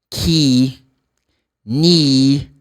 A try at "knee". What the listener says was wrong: You don't pronounce the letter K. It's not key. No, the letter K is silent in this word. So you say ni.